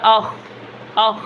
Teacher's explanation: آواز کے اندر نرمی ہے اور آواز جاری بھی ہے، بند نہیں ہوئی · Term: صفت رخوت